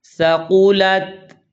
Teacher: قاف کو موٹا ادا کرنا ہے اور سا پڑھنی ہے، سین نہیں